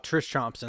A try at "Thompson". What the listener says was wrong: The H silent. you just pronounced my actual name phonetically.